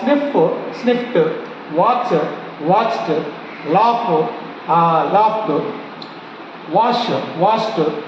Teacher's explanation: So these are voiceless consonant sounds. So if you want to pronounce the verb to ed endings, you sound with the T sound, not ed sound. So T sound replaced by ed.